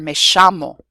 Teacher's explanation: in parts of Latin America, in Argentina, it's sometimes pronounced je or sh